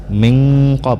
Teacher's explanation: Kemudian ba sukun, ba sukun ini dibaca qalqalah, yaitu qalqalah sughra, ada pantulannya tetapi tidak terlalu besar. Min qab ataupun disebut dengan qalqalah kecil, jadi ada pantulannya sedikit.